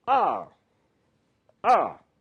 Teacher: The fourth tone, the falling tone.